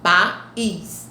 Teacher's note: Nós temos um hiato. Observe que o A fica numa sílaba e o I em outra. · Observe que o A fica numa sílaba e o I em outra. Tá? O A vai ser vogal, porque ele está sozinho.